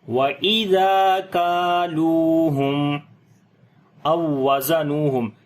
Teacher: الف مدہ ہے، لام کو لمبا کریں گے، واو مدہ ہے، میم ساکن کے بعد حمزہ آ گیا تو میم کا اظہار کریں گے